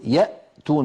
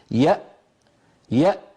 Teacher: إذا نطقنا همزة ساكنة نقول يأتون مثلا، يأ، فنجد بأن الوترين الصوتيين ينقفلان تماما ولا يبقى مجال لمرور ذرة من الصوت